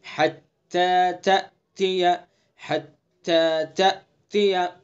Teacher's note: تا کا جو مخرج ہے، زبان کی نوک ثنا علیہ کی جڑ